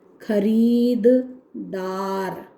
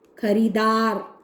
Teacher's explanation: जैसे एक सी ध्वनि या ध्वनि समूह दो बार एक साथ आ जाते हैं तो एक लुप्त हो जाता है। एक स्थान पर दो ध्वनियों का उच्चारण एक साथ करना असुविधाजनक होता है।